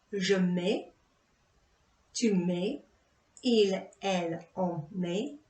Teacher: And again, for je, tu, il, elle, on, the S and T isn't pronounced.